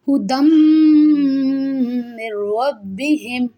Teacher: After noon sakin, ra comes with shadda. So you should have to read without nasalization sound.